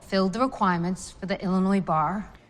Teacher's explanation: she has a very rhotic pronunciation of the word bar